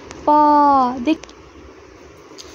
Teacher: उसी प्रकार अगर हम प वर्ग की बात करें तो प वर्ग के जितने भी पांचों वर्ण हैं उनके उच्चारण हम लोग ओठ से करते हैं।